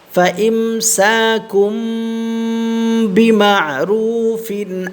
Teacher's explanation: ফায়ের নিচে কি তানভিন, দুই জের, তানভিনের পরে হামজা আসছে ইজহার, ঠিক আছে? এখানে কোনো গুন্না হবে না